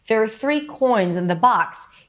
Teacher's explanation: Here, I chose to stress coins and box. So these words are high in pitch.